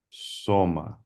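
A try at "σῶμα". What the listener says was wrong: Soma. Good. Very good.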